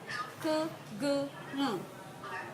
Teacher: Sounds produced with the back of the tongue against the soft palate or the velum. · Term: Velars